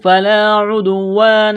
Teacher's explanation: حروف لین واو ہے، اس کو کھینچنا نہیں ہے بلکہ جلدی پڑھنا ہے نرمی کے ساتھ · دال یہاں پر ساکن ہے تو دال پر قلقلہ کریں گے